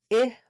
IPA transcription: ɪ